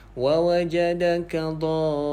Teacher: Jadi kita baca wa wajadaka dha, kita panjangkan 6 harakat, kemudian baru masuk kepada huruf bersabdu ni. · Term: mad lazim kalimi musaqqal